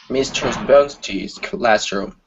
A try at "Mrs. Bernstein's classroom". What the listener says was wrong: Okay, so instead of mistress, Mrs. Mrs. Bernstein's classroom.